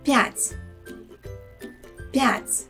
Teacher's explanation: Here the letter п has a soft sound п. And the letter Т is soft too. Notice that there is no Y sound in the middle of the word, so it shouldn't be п'ять.